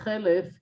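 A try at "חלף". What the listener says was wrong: The Chalef. Yeah, but it's pronounced Chalef, not Chelef. Chalaf. Chalaf, yeah.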